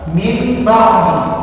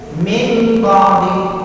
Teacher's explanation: apabila nun sukun mati atau tanwin bertemu dengan huruf ba, maka dia dibaca mim. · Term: iqlab